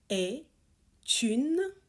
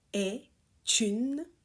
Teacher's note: we make a liaison here with the T